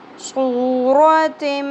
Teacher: صاد پر واو حرف مدہ ایک الف کے برابر کھینچنا ہے